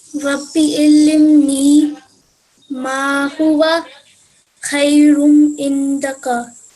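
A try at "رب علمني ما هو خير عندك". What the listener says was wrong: You made a slight mistake over here, so you read it as illimni. So read it again, but remember it's allimni over here.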